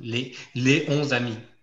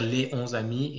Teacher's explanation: On ne va pas faire de liaison avec 11, tout simplement